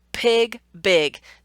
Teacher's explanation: The only difference between those two words are that I'm, in one hand, I'm using a voiced feature, in the other hand, I'm using a voiceless feature. The onset of those words.